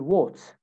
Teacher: A sound in British accent is actually an O sound